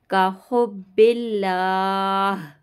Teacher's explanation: اللہ کے نام سے پہلے زیر آ رہا ہے اس لیے ہم اللہ کے نام کو باریک پڑھیں گے